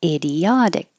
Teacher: And hold that final K. Your tongue should go to the K position, but not K.